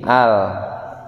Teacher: Lam itu punya sifat namanya al-inhiraf. Nah, al-inhiraf itu miring atau memiringkan. Posisi lidahnya miring seperti ini, al.